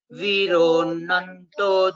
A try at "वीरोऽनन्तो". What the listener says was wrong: very good uttamam the small input is it is not viro this is dirgha viro nanto dhananjayah